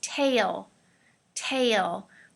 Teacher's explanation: Be careful of the A sound. It's very long, okay?